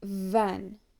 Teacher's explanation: Next, we have v, a voiced labiodental fricative, as in the word van. A voiced sound means that your vocal cords vibrate during its articulation.